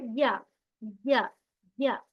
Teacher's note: तो जुबान के बीच का हिस्सा ऊपर के तालू से लगाने पर यह अदा किया जाता है